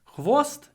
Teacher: here we have an a sound before a l and usually when we have a before a l at the end of a word we add a syllable